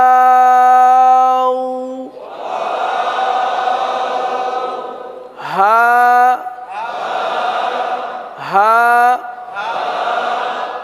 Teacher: हा हा हलक के आखिर वाले हिस्से से